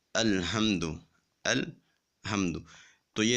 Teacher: الحمد کی ہا کو باریک پڑھنے کے بجائے موٹا پڑھ دیتے ہیں